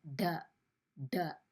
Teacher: அப்படி சொல்லும்போது ட உங்கள் நாக்கு வந்து உள்பக்கமாக மடிஞ்சிருக்கும். அதனால தான் இங்கே ஒரு பிளாக் லைன் மாதிரி இது காமிச்சிருப்பாங்க.